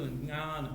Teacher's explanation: So it's a very nasal, Jnana, something like that. The earlier part is purely nasal.